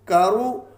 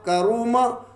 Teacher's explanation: اب را کے اوپر پیش ہے تو پیش کی صورت میں بھی را کو موٹا پڑھا جائے گا